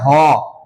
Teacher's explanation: বাতাস বেশি বের হচ্ছে বিধায় হচ্ছে মহাপ্রাণ আর এটার গলাটাও কাঁপে বিধায় এটা হচ্ছে ঘোষ